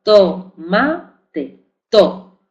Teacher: La letra T representa el fonema oclusivo dental sordo de tomate